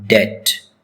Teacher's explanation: B is silent in this word.